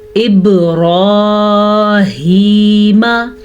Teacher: बा पे कलकला हो रहा है, बा हरूफ कलकला में से है। रॉ को हम पुर पढ़ेंगे क्योंकि रॉ के ऊपर खड़ी ज़बर है।